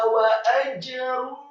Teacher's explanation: Wawunya setelah ditasydidkan fathah 1 harokat, kemudian alifnya fathah 1 harokat tipis. Kemudian setelahnya ada huruf jim, huruf ja yang sukun dibaca tafkhim tebal dan diqalqalahkan.